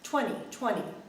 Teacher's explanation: we basically just drop the t sound